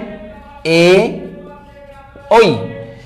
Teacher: এদের উচ্চারণ স্থান দুই জায়গা থেকে, একত্র দুই জায়গা থেকে, কণ্ঠ আর তালু, এই জন্য এদেরকে বলা হয় কণ্ঠ তালব্য বর্ণ।